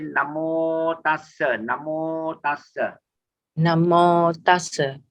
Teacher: In the Pali phonetics, A is a short A. There is no double M there. So we say Namo Tassa.